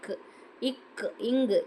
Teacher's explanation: நாவின் முதல் பகுதி அன்னத்தின் அடிப்பகுதியை பொருந்துவதால் வரும் எழுத்து